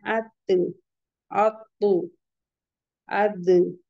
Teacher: ऊपर के दरमियानी दांतों की जड़ से हमारी टंग कहाँ लगेगी, ऊपर के दरमियानी दांतों की जड़ में लगेगी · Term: ता, दाल, तो